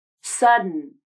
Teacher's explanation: then move directly to the end consonant without moving the tongue you should feel a quick burst of air come out of the nose as you say the n consonant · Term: nasal plosion